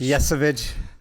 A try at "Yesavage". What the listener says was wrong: I think you're emphasizing the wrong letter in that name.